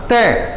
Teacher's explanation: जब तय बोलोगे तो तुम्हारी जो जीभ है, जो तुम्हारी जीभ है वो दांतों को स्पर्श करे बिना नहीं बोल सकती।